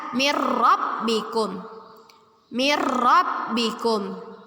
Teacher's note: ketika ada nun mati bertemu atau tanwin bertemu dengan huruf ro hukum bacaannya ialah ya idgham bilagunnah bilagunnah berarti tidak berdengung